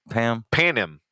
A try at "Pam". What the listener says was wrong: The N is silent.